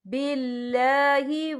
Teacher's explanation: باریک پڑھا جائے گا کیونکہ اللہ کے نام سے پہلے زیر ہے